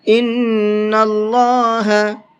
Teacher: إِنَّ اللَّهَ، نون کے اندر غنہ کریں گے اس لیے کہ نون کے اوپر تشدید ہے، اور اللہ کے نام کو یہاں پر بھی منہ بھر کے پڑھیں گے اس لیے کہ اللہ کے نام سے پہلے زبر ہے